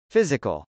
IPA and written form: fˈɪzɪkəl (physical)